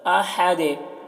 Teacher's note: ہا کو حلق سے ادا کر رہے ہیں، دال میں قلقلہ کر رہے ہیں